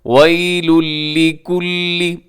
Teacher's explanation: ادغام کرتے ہیں، لیکن بغیر غنے کے، یعنی اس میں آپ نے جو نون کی آواز ہے اس کو آپ نے ختم کر دینا ہے